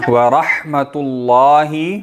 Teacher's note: را پر چونکہ زبر ہے تو را بھی موٹی ہوگی